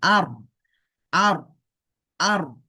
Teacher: র এর সাথে যখন হামজা উচ্চারণ হবে রটা একটু মোটা হয়ে যাবে